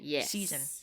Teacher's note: There's an S when you spell it, but you say it with a Z. Season. So, those are both examples of consonants that would otherwise be unvoiced between two vowels becoming voiced. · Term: intervocalic voicing